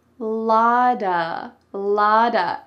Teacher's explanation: It looks like it has a T, right? But instead, it sounds like a D